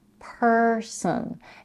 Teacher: In the first syllable in the word person, we have a stir sound, per, and in the second syllable we have a schwa